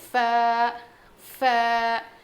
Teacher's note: سامنے کے جو دو دانت ہیں نا ہمارے, وہ نیچے کے ہونٹ پہ لگیں گے. ف. نیچے کے ہونٹ کے اندر کے حصے کو لگنے سے ف ادا ہوتا ہے.